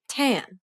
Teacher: this is the aspirated version of the t sound as it occurs in the word tan